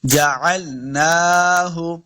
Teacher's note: نون کے اوپر کھڑی زبر ہے، اس کو 2 حرکات لمبا کریں گے